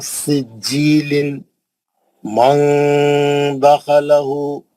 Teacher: नून clean ना रहना नून की आवाज छुपी हुई रहना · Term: इफा, इख्फा